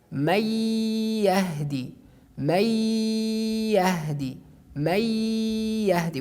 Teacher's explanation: idgham with ghunna, it means that we just exit the sound from our nose